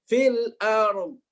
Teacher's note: ternyata Imam Hafs mentahqiq hamzah. Hamzahnya harus jelas, nggak boleh dibikin males-malesan gitu ya.